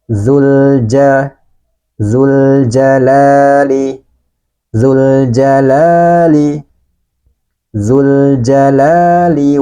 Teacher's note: di hadapan lam trif ini ada huruf Qariah maka lamnya ini harus kita baca dengan jelas dan sebagian suaranya dialirkan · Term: lam takrif, lam ta'rif